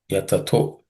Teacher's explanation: The visarga becomes u, so it becomes ta plus u becomes to